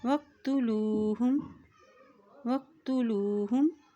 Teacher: वाव की ज़बर को कॉफ के साथ मिलाएंगे, ये कॉफ मोटा अदा किया जाता है। वाव ज़बर कॉफ, वक तापेश तू, वक्तु लाम पेश व लू, वक्तुलू हा पेश मीम हुम, वक्तुलूहुम वक्तुलूहुम।